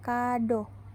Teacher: o fonem o mempunyai dua macam realisasi yang pertama direalisasikan sebagai bunyi o Tengah atas belakang bundar apabila berada pada silabel terbuka